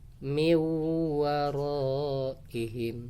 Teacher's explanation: Jadi sekalipun tidak bertasydid dibaca seolah bertasydid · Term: Idgham Bighunnah, idgham bi gunnah